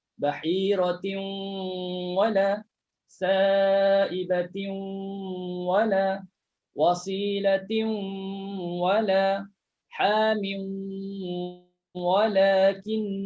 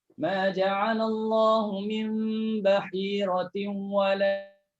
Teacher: Sebab dia hukum idgham al-ghunnah. Masukkan tanwin dalam waw berserta dengung.